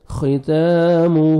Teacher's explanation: تا کو باریک پڑھ کے 1 سیکنڈ کھینچنا ہے آپ نے, کھڑا زبر ہے.